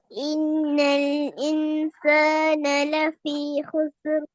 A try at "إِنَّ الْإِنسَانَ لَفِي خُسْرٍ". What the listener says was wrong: ஹுசுர். சீன் என்ன செஞ்சீங்க? இசு என்று கலக்குனீங்க, அப்படித்தானே? கலக்க இயலுமா அப்படி சீனை? சீனும் கலக்கிற எழுத்தா? 5ல உண்டு சீன் அப்படியா? இல்ல. இப்ப உங்களுக்கு தெரியும், இப்ப சீனை கலக்கப்படாது.